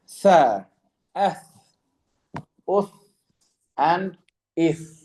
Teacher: So this one is that the tip of the tongue, to facilitate the recitation of the letters tha, dhal, and dha, the tip of the tongue will connect with the front upper teeth